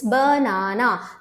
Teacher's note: schwa sound यानी कोई भी vowel हो, sound क्या कर रहा है? अ, यानी stressed sound नहीं है, उसका clear sound नहीं है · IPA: /ə/